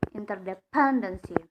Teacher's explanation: The stress on the third syllables from the last one.